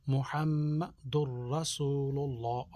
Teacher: میم مشدد غنہ، تھوڑا سا اس کو نا کے اندر رکھتے ہیں، محمد الرسول اللہ، را کے اوپر زبر، اس کو موٹا پڑھیں گے، للہ، اللہ کا نام موٹا پڑھیں گے۔